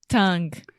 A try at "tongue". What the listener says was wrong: So do you see what you're saying? You're saying ong. So you are nasalizing a sound when nasalization does not take place. You can apply this to almost all words that have an N in English.